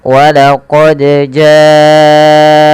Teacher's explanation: Kemudian balafal ja'akum, panjangkan huruf ja-nya sepanjang 4 harokat atau 5 harokat, karena ja di sini adalah mad wajib muttasil.